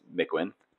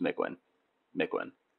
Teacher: No emphasis on either syllable.